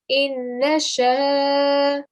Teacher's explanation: So there is a blank alif letter before that has a fatha on top, and therefore it's an alif mad, so we will stretch out the sound for 2 seconds